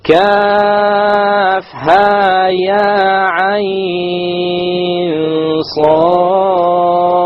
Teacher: we have the Kaf, 6 harakas, the Ha, 2, Ya, 2, Ain, 6, Ain is 6. Ain is 6, with the Ikhfa, with the Ghunna, and then the Sad has the Qalqala.